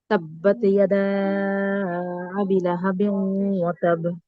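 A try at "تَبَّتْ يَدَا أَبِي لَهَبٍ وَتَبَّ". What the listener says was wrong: আবি, বিয়ে টান হবে আপু, হ্যাঁ। তাব্বাত ইয়াদা আবি, এখানে টান হবে।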